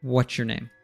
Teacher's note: And if we do it that way, because we have a T plus a Y sound, which typically if you have a Y in a function word like you or your, and the word before it is ending with a T, we'll morph this into a ch sound.